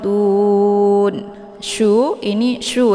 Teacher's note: Syu-nya letak posisi huruf sya ini yaitu di tengah-tengah lidah.